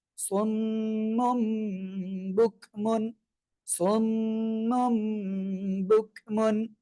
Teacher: মুন শেষে একটা দন্তন্য থাকতো কিন্তু এখানে কিন্তু দন্তন্য থাকতেছে না মিম হয়ে যাচ্ছে অর্থাৎ মোর মত উচ্চারণ হচ্ছে সদ মিম পেশ সুম মিম দুই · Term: ইকলাবের